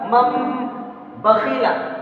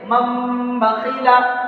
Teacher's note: حرف کو میم ساکن سے بدل کر غنہ اور اخفا کے ساتھ میں پڑھا جائے گا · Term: اقلاب